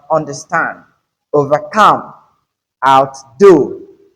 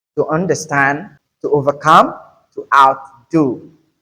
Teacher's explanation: the stress is on the second part of the compound word